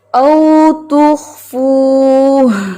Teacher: اینڈ پہ سینے سے آواز آنی چاہیے کہ آپ نے ہاں کو ساکن کیا